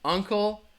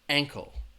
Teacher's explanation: And ankle, the difference would be uncle, the stress is on that first syllable. Ankle, the stress is also going to be on that first syllable, but it's a different vowel sound.